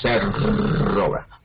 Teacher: la otra se llama vibrante múltiple porque la punta de la lengua toca varias veces. Se observa cuando decimos cerro, vibra, cerro, pues se llama vibrante múltiple.